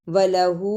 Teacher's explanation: ہا پر الٹا پیش اور چھوٹی مد ہے، اسے تھوڑا لمبا کرنا ہے